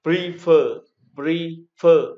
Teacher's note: Example, prefer, prefer, như vậy ta thấy có hai âm tiết, đấy. Prefer, nhưng dấu trọng âm lại rơi vào âm tiết thứ hai, đó là fer.